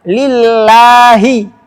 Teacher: Lillahi harus dibaca tipis lamnya.